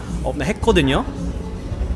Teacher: going from a low to a high rising intonation to you know describe your unfair situation or your unfair emotions.